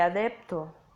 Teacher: En el caso de las oclusivas, solo se da el primer tiempo de su articulación, que es la intención, y carece, por tanto, de explosión. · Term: implosivas